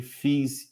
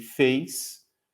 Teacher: essa diferença de tempo entre fiz e fez, mostrando essa distinção entre o I e o E